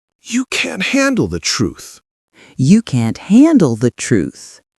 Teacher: Strong stress on can't and truth. Use full energy.